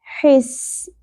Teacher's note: اپنے وسط حلق سے ادا کرنا ہے، حس، اور سین میں سیٹی کا ایلیمنٹ کلیئر ہونا چاہیے.